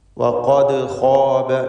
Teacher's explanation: നാവിൻ്റെ അങ്ങേയറ്റം അഖ്സൽ ലിസാനാണ് ഖാഫിൻ്റെ മഖ്റജ്.